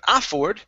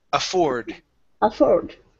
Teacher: The stress is at the end of the word